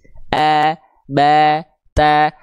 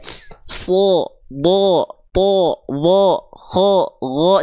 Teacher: Pokoknya kalau kedengaran vokal seperti O, bukan vokal A tebal dia.